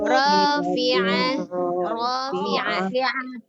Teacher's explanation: Ain dari tenggorokan bagian tengah ya.